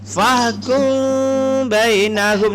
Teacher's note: Jadi ketika kita baca yang seharusnya fahkum bainahum tanpa tajwid, fahkum bainahum. Jadi ketika ada mim mati bertemu dengan ba, maka kita sembunyikan mim. Macam mana menyembunyikannya? Bibir tidak rapat.